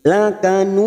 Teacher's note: Qalqalah kubro pada huruf dal yang mati di akhir kalimat dan dibaca wakaf. Huruf dal ini kita memantulkan, jangan seperti lakanud.